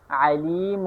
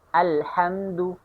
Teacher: دوسرا نمبر حصہ وسط حلق، اس سے بھی 2 حروف نکلتے ہیں، اور وہ 2 حروف یہ ہیں عین اور حا